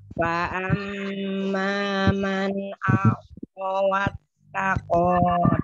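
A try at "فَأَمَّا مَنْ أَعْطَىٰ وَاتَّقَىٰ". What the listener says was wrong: Tanya panjang. Tidak dibaca panjang ya, tidak dibaca panjang fanya ya, pendek ya. Fa'amma man a'tawattaqo.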